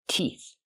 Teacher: the TH makes a sound with no voice, like in thank you and think